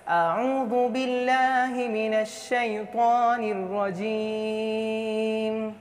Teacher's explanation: रजीम नहीं, रॉ मोटा है